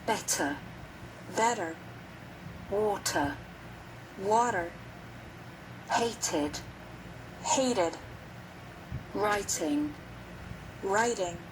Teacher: Americans often pronounce the letter T like a quick D sound